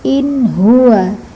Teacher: nun sukunnya ini jelas, kemudian pendek saja, pendek, tidak didengungkan, tidak dipanjangkan. In huwa, satu ketukan aja, in huwa, h-nya di dada, in huwa.